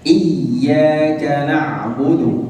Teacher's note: Dan ain di sini huruf ainnya bersukun. مخرجها قريب جدا من الحاء. Dan makhrajnya itu sangat dekat dengan huruf ha. ولكن الفرق بينها وبين الحاء Perbedaannya antara huruf ain dan huruf ha ini, هما الاثنين من وسط الحلق.